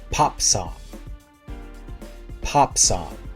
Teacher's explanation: ah is very open and very far back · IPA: /ɑ/